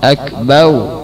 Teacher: mengganti ra dengan waw. Akbar menjadi akbau, akbau, seperti orang yang lisannya tidak bisa mengucapkan ra, akan tapi a.